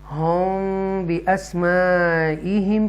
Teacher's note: यहाँ पर होम बिअस्माइहिम, ये इख्फाए शफवी है, मीम साकिना के बाद बा जब आ जाए तो इख्फाए शफवी है